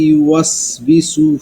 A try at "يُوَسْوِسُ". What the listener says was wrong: ইউয়াস উইসু, বিসু না, ইউয়াস উই উই উই।